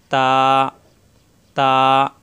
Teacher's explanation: তা জিহ্বার আগা উপরে দুই দাঁতের গোড়ায় লাগিয়ে ছেড়ে দিতে হবে, এক আলিফ পরিমাণ টান।